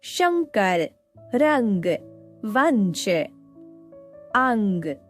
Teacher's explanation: इसका उच्चारण नासिका से किया जाता इसे अनुस्वार कहते हैं।